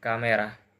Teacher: The middle vowel is removed to reduce syllables.